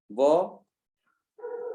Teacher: वो में आपके दांत भी लग रहे हैं और होंठ भी लग रहे हैं, तो क्या हो जाएगा आपका, दंतोष्ट हो जाएगा, ये होगा नहीं होगा।